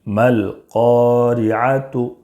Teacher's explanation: قاف میں الف مدہ ہے، ایک الف کے برابر کھینچ کر پڑھیں گے